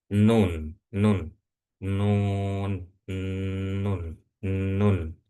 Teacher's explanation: Nah, nah, sebelum fathahnya itu terucapkan, eh, maka udara itu nggak akan bisa keluar lewat mulut. Karena kenapa? Karena tertahan oleh lidah udaranya. Maka udara itu harus dikeluarkan demi bisa mengeluarkan suara. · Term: huruf nun